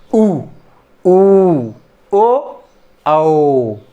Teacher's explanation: ये जो है जीभ का पश्च भाग यूज हो रहा है, जैसे उ, ओ, औ।